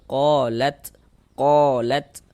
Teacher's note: Qolat ini kita baca lat begitu. Jadi ada nafas yang mengalir ketika kita mengucapkannya. Karena huruf ta ini dia kalau sukun kita baca seperti ini. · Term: sifat ahmas